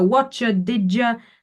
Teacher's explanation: the ch and j assimilation is the most common